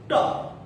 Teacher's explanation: ट में आपकी जीभ ऊपर वाले तालु से टकराएगी